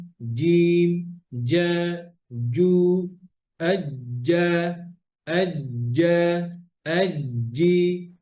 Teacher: জিহ্বা টিপ থেকে হবে না, from middle of the tongue · জিম হচ্ছে সিদ্ধার হরফ বাতাস বন্ধ